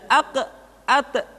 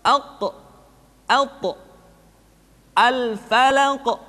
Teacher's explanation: qalqalah yang terdengar ketika mengucapkan qaf dan ta terdengar menebal suaranya